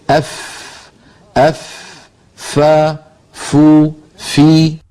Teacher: فا کا مخرج، اس طرح فا ادا ہوتی ہے کہ اوپر والے سامنے کے دو دانتوں کو نچلے ہونٹ کے تر حصے پر رکھ کر ادا کیا جاتا ہے۔ ہونٹ کے تر حصے کو ہونٹ کا باطن بھی کہتے ہیں۔